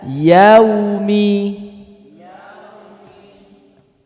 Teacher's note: ingat ini Fatah bukan yo Tapi ya